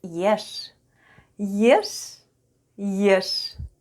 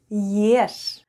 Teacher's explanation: Soft sign doesn't affect the way we say sound sh.